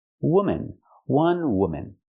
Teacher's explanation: the second syllable is relaxed and closed